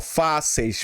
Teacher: Porque na posição aqui eu tenho primeiro uma vogal, ó, fáceis. Primeiro eu tenho a vogal e, depois eu tenho a semivogal i. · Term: decrescente